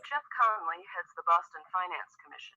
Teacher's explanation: right at the end after the word commission, there's a little rise. It doesn't go down, it goes up a bit at the end. And this is what we do when we're not finished speaking. · So the word finance is the word that's focused in this sentence and not the word Boston. So Boston is already in the domain that she's talking about.